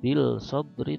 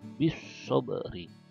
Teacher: Sama dengan Sod ini huruf syamsiah, maka ketika ada bi di depannya kemudian alif lam, maka langsung ke sod, bukan ke alif lam, bukan bil sobri tapi bis sobri gitu.